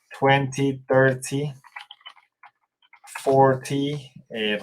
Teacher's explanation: Recuerden que en Estados Unidos esa T muchas personas no lo pronuncian.